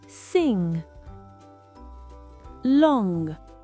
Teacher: Et pour le son ong, bloquez le fond de la langue, on ne doit pas entendre le g à la fin.